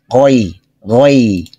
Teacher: জিহ্বার গোড়া যেখানে শেষ, গলার শুরু এখান থেকে আসবে, জিহ্বার যে মধ্যখান উপরের দিকে যাবে না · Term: গইন